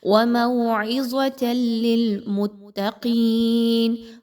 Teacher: تنوین یا نون ساکن کے بعد لام کا حرف آ جائے تو یہاں ادغام کیا جاتا ہے، ادغام ایسا کہ جو غنے کے بغیر ہو، یعنی اب آپ نے تنوین کی آواز کو لام کی آواز کے ساتھ مکس کرنا ہے لیکن رکنا نہیں ہے، غنہ نہیں کرنا · قاف کو اس کے مخرج سے نکالیے موٹا کر کے، موٹا حرف ہے